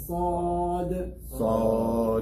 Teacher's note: The tongue is raised in the back. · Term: heavy